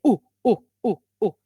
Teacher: you round your lips, okay, but at the back of the tongue, you find you feel the back of your tongue against the velum, okay, in the back at the roof.